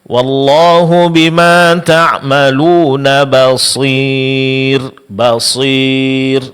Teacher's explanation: dalam pengucapannya mencampur suara mad ya dengan sedikit daripada ghunah yaitu disertai dengan dengung